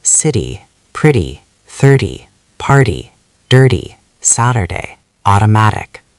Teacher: Your tongue just taps the ridge behind your upper teeth once, very fast, almost lazy. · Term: flap T